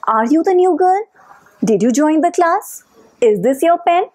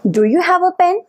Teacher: So these kind of questions, closed questions, have rising intonation at the end of the question.